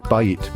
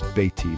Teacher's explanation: Take bayit, meaning house, add I, meaning my, and it becomes beiti, my house. The A changes to E and the stress moves.